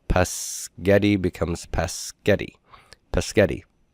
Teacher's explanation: because the S is unvoiced, the voiced G sound devoices and becomes a K sound.